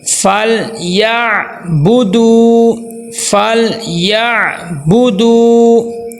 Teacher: واو مدہ کی پہچان کا طریقہ کیا ہے کہ واو کے اوپر جزم ہوتی ہے، پیچھے پیش ہوتی ہے، تو واو مدہ کو ایک الف کے برابر لمبا کرتے ہیں.